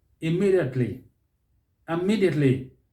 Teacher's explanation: Stress is on the second syllable.